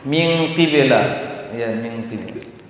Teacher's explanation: Karena qaf dikurangi ketebalannya, maka dengung juga dikurangi.